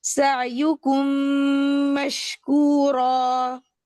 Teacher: हमने मीम को पूरा का पूरा अगले मीम के अंदर मुतगम कर दिया है। मर्ज कर दिया है। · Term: इगाम शफवी